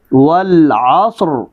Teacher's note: را ساکن اس سے پہلے صاد ساکن اس سے پہلے عین پر زبر تو را موٹی ہوگی